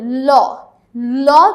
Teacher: দেখো ল, ল যখন আমরা উচ্চারণ করি তখন আমরা জিহ্বাটা এমনভাবে ব্যবহার করি যে জিহ্বার 2 পাশ থেকে বাতাস বের হয়ে আসতে পারে। আর পার্শ্বিক ব্যঞ্জন হচ্ছে মাত্র একটি, সেটা হচ্ছে ল।